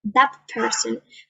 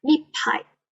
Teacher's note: in casual rapid speech, the T will sound like P before a bilabial consonant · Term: place of articulation